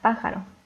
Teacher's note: pájaro que igualmente es una palabra esdrújula y se debe acentuar ya que la sílaba tónica está en la antepenúltima